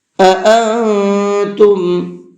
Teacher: یہاں پر دو حمزہ ہے، دونوں کے ساؤنڈ الگ الگ ہونے چاہیے